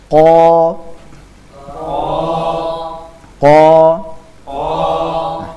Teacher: lidah bagian paling belakang menempel langit-langit atas bagian daging yang lunak jadi pangkal lidah menempel langit-langit atas pada bagian daging yang lunak · pangkal lidah menempel langit-langit atas pada bagian daging yang lunak. Disitulah nanti tempat keluarnya huruf qaf. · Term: huruf qf